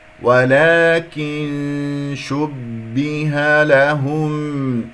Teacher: با شديدة مجهورة من صفاتها وهي مكسورة